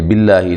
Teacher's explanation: لفظ اللہ کو باریک پڑھنا ہے، اس سے پہلے زیر آ گئی ہے